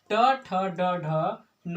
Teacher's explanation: सब का उच्चारण स्थान मूर्धा है